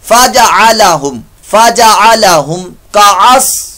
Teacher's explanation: कास सौद की आवाज, सीन नहीं